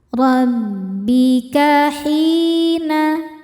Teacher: Huruf ra dibacanya tafkhim karena harokatnya di atas yaitu baris fathah. Dibacanya ditebalkan.